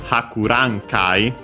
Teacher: The accent of Hakurankai is on the ra. So yeah, most likely the rule is the accent is before kai.